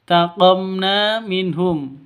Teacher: Di sini ada mim mati bertemu dengan nun. Cara bacanya jelas, terang. Kenapa? Jelas, terang karena bacaan izhar safawi.